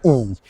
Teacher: it's like how high the tongue is right so for example if you're pronouncing the sound e you can feel your tongue is like very close to the top of your mouth